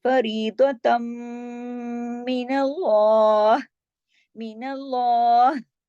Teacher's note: फरीदतम इदगाम हो रहा है, ता दो जबर तन की तनवीन के बाद मीम मुशद्दद है, इदगाम होगा और गुन्ना होगा कौन सा, अकमल, बड़ा गुन्ना, देर तक आवाज नाक में छुपेगी